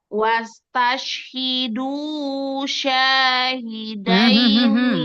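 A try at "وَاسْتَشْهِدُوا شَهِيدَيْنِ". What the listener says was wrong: Syah nggak ada mat. Alifkan sin. Wastashhidu syahidaini.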